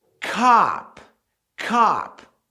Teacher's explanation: Essa pronúncia da letra O mais próxima do A é muito forte em algumas regiões dos Estados Unidos.